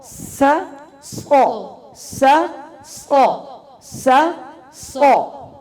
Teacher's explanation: سو کرتے ہوئے موٹا کرتے ہوئے لپس کو گول نہیں کرنا